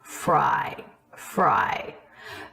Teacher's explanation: that quality of the voice at the end of a phrase as the energy of the voice is starting to diminish the breath is starting to diminish and as the pitch comes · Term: vocal fry